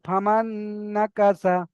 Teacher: এখানে নুনের উপর সাকিন এসেছে, এখানে নুন সাকিন বলে, নুন সাকিনের পরে নুন এসেছে, তাই নুন, নুন সাকিনকে একালি পরিমাণ গুণনা করে মিলিয়ে পড়তে হবে। নুন সাকিনকে নুনের সাথে মিলিয়ে একালি পরিমাণ গুণনা করে পড়তে হবে।